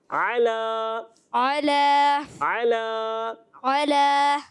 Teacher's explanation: عین کی آواز آئی ہے مگر کم آئی ہے، تھوڑا سا اور عین پر زور دیجئے